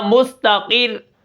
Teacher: اب یہ را بھی کیا ہوگی، باریک ہوگی کیونکہ پیچھے زیر آ گئی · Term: را باریک